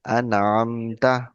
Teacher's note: So that's why what we do here, we do Izhar. Izhar means we read clearly. So we don't do Gunna here. We read An, Am, Ta.